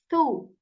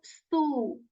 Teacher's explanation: tip of our tongue at the tip of our upper teeth tip of the tongue touches the tip of our upper teeth very softly okay there is not any whistle there isn't any buzzing sound